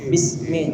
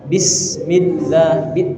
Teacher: S-nya itu harus Harus keluar, desisan itu harus keluar